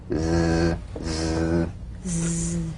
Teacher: the Z vibrates in that very small open space between the tongue and the upper teeth right in here little space right between the tip of the · The Z, cognate S, a voiced S sound fricative. The tongue rim should gently touch the upper gum ridge. Z, z. The tip in gentle contact with the hard palate.